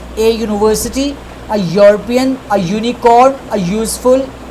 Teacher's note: Although I am using U, E, U, so these are actually vowel words, vowel alphabets, but as we are not pronouncing this U sound or E sound, this word is actually having sound YU. So both of these are consonant alphabets, and the sound which is produced by these words in pronunciation, that is yo sound.